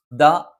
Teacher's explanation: നാവിന്റെ അറ്റം മേലെ മുൻപല്ലിന്റെ മുരട്ടിലാണ്